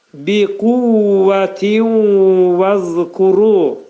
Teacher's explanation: Tindəki nun səsi vəvə dəyəcək. İdğam mə'al-ğunnə olacaq. Yəni burada olan nun səsi vəvə yetişəcək, dəyəcək.